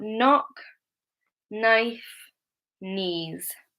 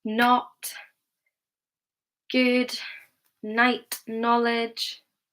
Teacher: the K is always silent. We pronounce it with an N sound, the N at the beginning.